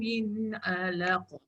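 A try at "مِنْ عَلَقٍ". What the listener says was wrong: Min 'alaq. Jangan turun dekat laq tu. 'alaq.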